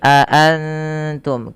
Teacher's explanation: Kemudian pada lafal antum di sini ada bunyi bacaan yang dinamakan dengan ikhfa hakiki. Suara nunnya disamarkan kepada huruf ta yaitu dibaca a a ya a antum antum bukan antum tapi aantum.